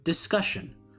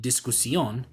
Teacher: An example in English would be the word discussion, where before it would be pronounced discusión, but later in time, the S sound got palatalized